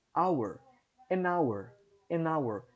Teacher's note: Apesar de começar com H, tem o som de uma vogal aqui essa palavra. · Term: H mudo